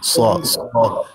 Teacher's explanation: ہونٹوں کو گول نہیں کرنا، مفخم پڑھنا ہے، منہ بھر کے پڑھنا۔ ہونٹوں کو گول نہیں کرنا، سواد، سین کو سواد نہیں کرنا، صاد، صاد صرف مفخم۔ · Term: صاد مفخم